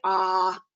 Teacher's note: all the way down to where your jaw is the lowest, the ah sound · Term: doctor sound